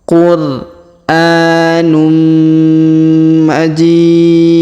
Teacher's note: huruf tanwin UN bertemu dengan mim bertasdid maka tanwin unnya melebur ke huruf mim bertasdid ya jadi berubah menjadi ee mim ya contohnya Anum qurum jadi